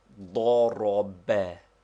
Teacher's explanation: They form the Arabic word he struck, which is pronounced ضرب, with the accent on the last syllable